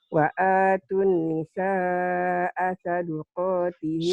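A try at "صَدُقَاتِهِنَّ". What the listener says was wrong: Saduqa, bukan sadaqah. Saduqa.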